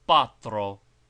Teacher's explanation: It should not be dwelt upon and in all cases it should be pronounced quite purely without the slight drawing R sound which is sometimes added to the corresponding vowel in English